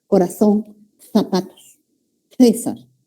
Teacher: Interdental, el cuerpo de la lengua se ubica entre los dientes.